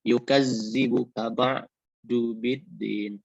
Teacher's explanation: Nah, umpamanya didahului huruf alifnya didahului oleh tanda baca fathah mad tabi'i, ma panjang dua harakat. Yukaz huruf zal itu bertanda baca tasdid, jadi ditekan ditahan dua harakat